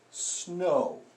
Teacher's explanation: O and W together, this often isn't ow, it's often O